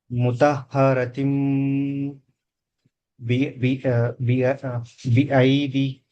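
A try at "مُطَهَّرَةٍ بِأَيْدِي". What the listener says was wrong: Very good.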